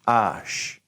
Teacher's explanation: I'm going to go ahead and tell you H in French is mostly silent. And so when we say H, we're not going to go like we do in English. We're not going to breathe it.